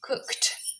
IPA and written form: kʊkt (cooked)